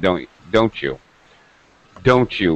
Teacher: right falling intonation that means i'm making it a rhetorical question